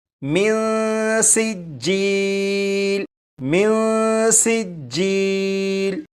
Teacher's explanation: اب ان دونوں الفاظ کو پڑھیں گے اور یہاں پر دیکھیں نون ساکن ہے، نون ساکن کے بعد سین حروف اخفا میں سے ہے، لہٰذا یہاں پر نون ساکن میں اخفا ہوگا، یعنی غنہ کر کے پڑھیں گے